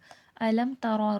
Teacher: را کو پر کر کے موٹا کر کے پڑھا جائے گا کیونکہ را پہ زبر ہے، یہاں پر لین ہے، یا ساکن سے پہلے زبر ہے، کیفا، اس کو کیفا نہیں پڑھیے گا۔